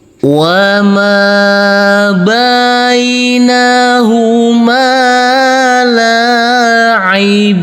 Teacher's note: Yang pertama kita kasih irama nada datar dengan panjang 2 harokat.